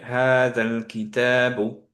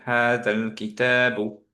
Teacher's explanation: হামজাতুল ওয়াসল connecting যেই হামজাটা, সেটা কানেকশনের জন্য সাইলেন্ট হয়ে যাবে